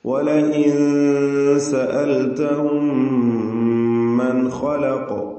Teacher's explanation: സാക്കിനത്തായ നൂനും ശേഷം ഖാവും വരുന്നുണ്ട്. അവിടെ ഇൽഹാർ ഹൽഖി നൽകി മണിക്കാതെ വെളിവാക്കുക.